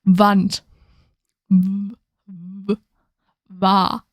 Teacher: W is a little bit like the V sound in English, but it's you round your lips a bit more, but there's like more emphasis on the lips.